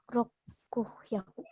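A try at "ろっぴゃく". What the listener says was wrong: Ropyaku. Dia tidak hyaku lagi, tapi ropyaku.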